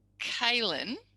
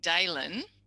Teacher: kailyn is voiceless and they're saying d voiced so they're voicing so dalen is fronting and voicing both typical error patterns aren't